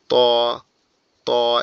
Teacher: জিহ্বার আগা, উপরের দুই দাঁতের গোড়ার সঙ্গে লাগবে, লেগে উচ্চারিত হবে